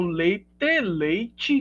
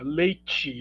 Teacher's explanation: a língua meio que não apenas toca os alvéolos, né? Leite, mas ela se deita, digamos assim, sobre o palato, né? O palato é o céu da boca, leite. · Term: palatalização